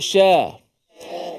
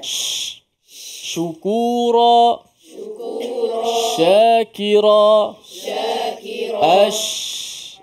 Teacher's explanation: Huruf syin makhrajnya terletak di bahagian tengah lidah.